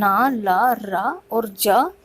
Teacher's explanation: वर्तस्य व्यंजनों के उच्चारण में जो हमारी जीभ है वर्तस्य अथवा ऊपरी दांतों के मसूड़ों को स्पर्श करती है,